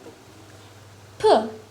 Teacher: P is voiceless. P or P is a voiceless bilabial stop consonant